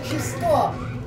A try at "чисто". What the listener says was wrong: Ты хотя бы ударение правильно ставь. Чисто.